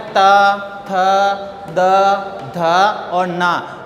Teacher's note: इनका उच्चारण करते हैं तब जीवा जो है दांतों के टच होती है, इसीलिए इनको दंत्य वर्ण कहते हैं।